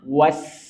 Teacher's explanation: Dan tipiskan, jangan sampai dia was, tapi tipiskan karena sin dia tarkik tipis.